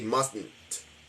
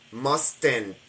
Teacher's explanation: you're not supposed to open your mouth and make an explosive t with an E ending sound that's not the way it's supposed to sound people will understand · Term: nasal T